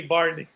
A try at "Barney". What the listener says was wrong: Yeah, it sounds like you're saying Barbie, not Barney. Enunciate, Enunciate. Barney. God damn it, it's Barney.